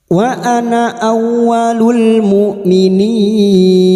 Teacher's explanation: Lafaz anah ditandai sifir mustatil. Jika dibaca wasal atau terus maka na dibaca pendek. Namun jika dibaca waqaf di sini na tetap dibaca panjang dua harakat.